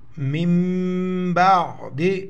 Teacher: نون ساکن کے بعد جب با آ جائے تو یہ نون میم میں کنورٹ ہو جائے گا ، تبدیل ہو جائے گا، اس کو میم زیر مم پڑھیں